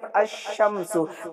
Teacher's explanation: یعنی لام چھوڑ کر ہم الف کو ملائے شین میں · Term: حروف شمسی